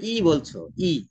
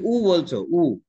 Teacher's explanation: এখন যখন তুমি ই বলছো, ই জিভ এগিয়ে যাচ্ছে। যখন তুমি উ বলছো, উ, দেখো জিভ পিছনের দিকে টেনে গেছে না?